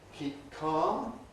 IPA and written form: ˈkiːp̚ ˈkɑːm (keep calm)